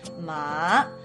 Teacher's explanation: the third tone technically goes down and then up